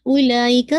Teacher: ये मद्दुल वाजिब मुत्तसिल है, हमजा उसी वर्ड का हिस्सा है, 4 to 5 काउंट आप इसको स्ट्रेच करेंगे और हमजा की कसरा शार्प शार्प रखेंगे, उला ई का पूरा